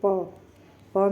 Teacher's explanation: दोनों होठ मिलते हैं, तो ये ओष्ठ व्यंजन हो गए